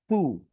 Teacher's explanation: উকারের সময় যখন আমি হু বলবো, আমার ঠোঁট কিন্তু গোল হতে হবে, হ্যাঁ। ঠোঁট যদি গোল না হয় তাহলে আমার উকারটা সুন্দরভাবে উচ্চারণ হবে না।